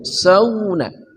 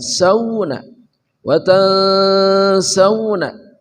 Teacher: vokal sauna mulutnya monyong ke depan